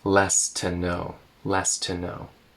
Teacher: Connecting the ST and the T.